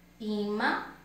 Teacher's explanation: No ima, a sílaba mais forte é o I. Por quê? Porque o I é acentuado com acento agudo.